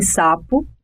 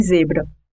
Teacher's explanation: apenas um ponto que as diferenciam o vozeamento o s é desvozeada